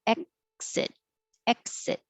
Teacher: you don't have to release the k noise exit hold it in the k position exit exit and you